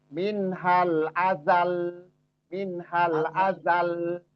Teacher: Jadi karena dia itu huruf yang bertasdid dan kita wakof, jadi ada penekanan di situ. Jadi beda dengan huruf yang nggak ada tasdid. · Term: dinaber